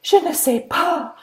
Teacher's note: a British person speaking French would be really aspirated t and p. Even more so than an American speaker.